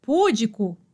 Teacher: Paroxítona, penúltima sílaba tônica.